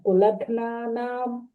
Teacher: that గ half ఘ sound మహాప్రణం